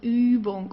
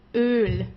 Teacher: Ü goes a little bit more down, it goes Übung, and Ö goes more up, so it's Öl.